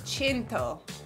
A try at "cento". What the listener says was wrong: Cento. No, not E. Cento. Okay, just imagine there's a C-H-E. C-H-E.